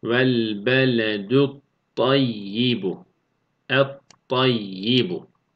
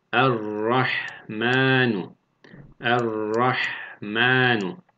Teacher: Bunu da okurken şeddeli bir harfin hakkı verilecek kadar okuyoruz. Yani herhangi bir gunne yapmadığımız için tutma da yapmıyoruz. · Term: bila gunne